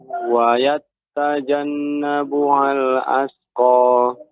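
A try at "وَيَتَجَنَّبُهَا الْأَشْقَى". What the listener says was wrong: Ya, tidak ada tasydid, Pak. Wa yatajan, ya tadi terdengar ada seperti tak bertasydid wayat ya, akan tapi tidak tasydid. Wa yatajannabuhal ashqa.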